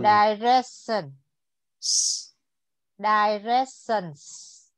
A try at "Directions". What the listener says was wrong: Very good. Okay, good.